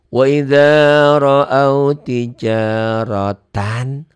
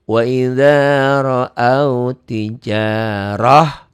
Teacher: ta'mar butoh ini apapun barisnya dihentikan jadi ha ya. Jadi ha mati.